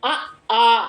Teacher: அவற்றுள் மிடற்று உயிர்ல பாருங்க அவற்றுள் அ ஆ இரண்டும் அங்காந்து இயலும் அ ஆ என்ற இரண்டு உயிர்களும் வாய் அங்காத்த நிலையில் மிதற்று வழியால் பிறக்கின்றன வாய் அங்காந்த நிலையாலும் நா பின் முன்னும் பின்னும் தாழ்ந்து நடுவில் உயர்ந்த நிலையாலும்